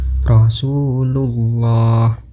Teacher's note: Cara bacanya harus membaca huruf lam pada lafal Allah dengan tebal, yaitu dengan cara mengangkat semua lidah dan menekankannya ke langit-langit atas sambil menekankan suara yang cukup kuat